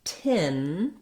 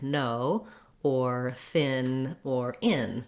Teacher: What I mean by an actual N is that when I'm saying the word tin, I say the N sound, same sound I say in words like no or thin or in. So the front of my tongue lifts behind my teeth.